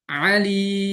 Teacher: Lalu bitul ya alimnya tinggal dibuat 6 harokat.